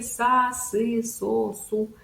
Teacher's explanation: Посмотрите, как формируется артикуляция звука, что у нас звук произносим мы в улыбке, улыбаемся, язычок за нижними зубами, и произносим звук. Струя воздуха идет посерединке языка. И мы как бы выдуваем эту струйку воздуха, и произносится у нас, получается, звук «с».